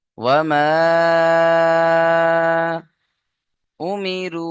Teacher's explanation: ওয়ামা, এখানে দেখেন মিমের আলিফের ডান দিকে জেবার আলিফ মাদ্দা, আর হুরুফে মাদ্দার পরে হামজা দ্বিতীয় শব্দে বা ভিন্ন রূপে এসছে। মাদ্দে মুনফাসিল 2 থেকে 3 আলিফ টান দিতে হবে